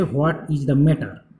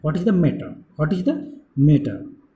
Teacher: Questions beginning with WH words said in a neutral way, we can use the falling intonations. जो questions पूछा जाए WH words और neutral वे में, simple से वे में, उसमें कोई कुछ नहीं रहेगा, सिर्फ क्वेश्चंस रहेगा, वही उसमें हम फॉलोइंग इंटोनेशन यूज कर सकते हैं.